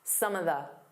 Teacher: Instead of saying of, you can just do an unstressed some of the. So it sounds like one word.